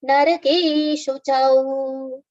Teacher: we have au, which is a long sound, so we can prolong at the end of the 4th charan.